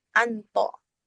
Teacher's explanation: perubahan ain sukun yang berada di tengah-tengah kata menjadi nun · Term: lahjah al-istinta